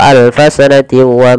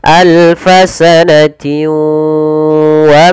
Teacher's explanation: harusnya ditahan dulu dua harakat. Alfasan w baru dilepas.